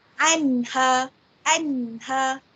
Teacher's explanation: dijelaskan bunyi nun mati ataupun tanwin itu tanpa mendengungkan ataupun menggabungkan. Cara bacaan yang jelas seperti anha, anha, jelaskan bunyi nun itu apabila nun mati bertemu dengan ha, kerana huruf ha adalah salah satu daripada huruf izhar halki.